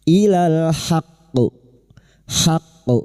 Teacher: Haqqu, huruf ha membunyikan huruf ha, jangan tertukar ha. Ha mengalirnya nafas dan suara dan masuk pada huruf qaf yang bertasdid dan kita pantulkan dengan kuat. Ilal haqqu qalqalah kubra, huruf qaf yang mati dan dibaca waqaf dan disertai tasdid.